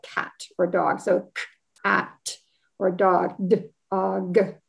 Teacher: the k and the t and the d and the g, they're all stop sounds